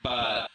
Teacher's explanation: Watch how the lips close the mouth gateway completely for this B in but.